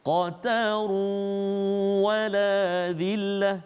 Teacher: Masukkan bunyi tanwin itu ke dalam waw beserta dengan dengung